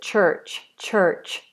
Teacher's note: So in American English, this is church, church. They'd roll into the R sound.